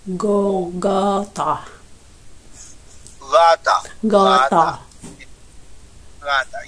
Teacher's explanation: Let your tongue sink down instead of touching the palate to make the go more like whoa. Tongue down.